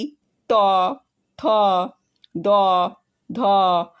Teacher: এই বর্ণগুলো দন্তের সাহায্যে উচ্চারিত হয় বলে এদেরকে দন্ত বর্ণ বলা হয়